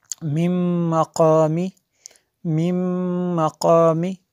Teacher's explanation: یہاں پہ نون ساکن کے بعد میم حروف یرمالون میں سے ہے، تو اس لیے جو ہے یہاں پہ ادغام ہوگا